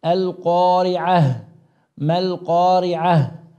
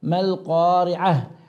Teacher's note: فالمخرج الهاء من أقصى الحلق